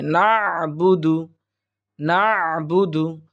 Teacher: একটু কড়া, হলকের কণ্ঠনালীর মাঝখান থেকে উচ্চারণ হবে না'বুদু, না'বুদু, অর্থাৎ হালকা করে যদি আমি আমার নিজের গলাটা একটু চেপে ধরি, চেপে ধরার ফলে যেমন এরকম একটা আওয়াজ আসে, ঠিক এরকম একটা আওয়াজ আসবে না'বুদু, না'বুদু, ইয়াকা না'বুদু।